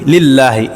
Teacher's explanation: আল্লাহ শব্দের লামের পূর্বে জের এসেছে এই কারণে পাতলা হয়েছে